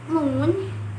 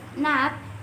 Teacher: We close our palate and let air stream through the nose. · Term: nasal